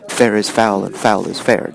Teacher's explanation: one stressed followed by a single unstressed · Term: truck poetry